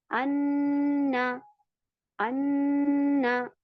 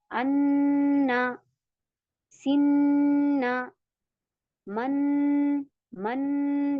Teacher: भिन भिनाहट हो रही है ना, नाक में बजिंग साउंड आ रहा है। अन्ना, सिन्ना, मन, मन, ये जो हो रहा है ना, ये गुन्ना है।